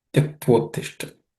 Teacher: Tyaktvottishta is made of two words, Tyaktva and Uttishta. A and U becomes O.